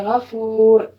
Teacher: را ساکن پر دو پیش کے ساتھ وقف کیا جائے تو پھر بھی ہم اس کو پر پڑھیں گے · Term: موٹا